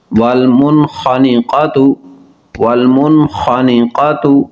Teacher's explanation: نون ساکن کے بعد خا حروف حلقی ہے، اظہار ہوگا